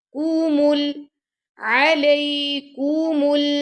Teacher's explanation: मीम को मो नहीं पढ़ना मु पढ़ना है